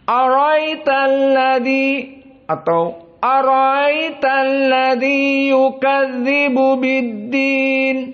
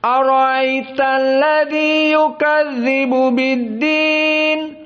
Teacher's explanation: Abu Ja'far tashil al-hamzah ats-tsani.